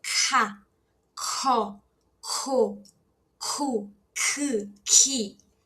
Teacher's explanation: Esse é o som dele. Bem aspirado, tá?